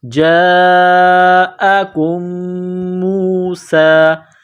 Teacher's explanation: میم پر غنہ کریں گے، آواز ناک میں چھپائیں گے، میم کو واو کے ساتھ ملائیں گے، جاءکم موسیٰ۔